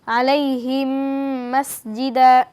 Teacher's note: মিম সাকিনের পর যদি মিম আসে তাহলে আমাদেরকে গুন্না সহিত পড়তে হবে আলাইহিম মাসজিদা এখানে মিম সাকিনের পরে মিম এসেছে সেই কারণে আমাদেরকে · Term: মিম সাকিনে ইদগাম